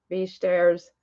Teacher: the W is pronounced as a V